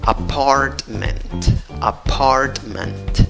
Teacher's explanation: No pronuncies con E al final, es schwa. · En la primera sílaba tienes el sonido de una schwa, En la segunda sílaba tienes el sonido de una A fuerte, Y en la última sílaba tienes otra vez el sonido de una A que se duerme, la schwa.